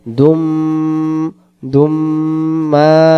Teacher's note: আবিদুম মা মিমের উপর তাহসিদ, এখানে গুণনা করে পড়তে হবে